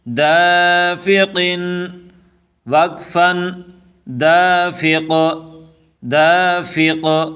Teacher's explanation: وقف کی صورت میں فا قاف کے ساتھ ملا کے پڑھیں گے